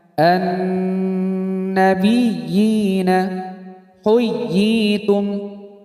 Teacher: Mad tamkin ialah ya kasroh bertasydid bertemu ya sukun, panjangnya satu alif atau dua harokat.